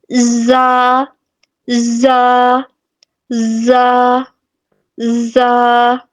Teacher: آپ نوٹس کر رہے ہوں گے کہ اس میں تھوڑی سی سیٹی کی آواز آ رہی ہے ز کر کے. ان کو سختی سے تھوڑا ادا کیا جاتا ہے اس طرح سے. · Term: حروف صفیریہ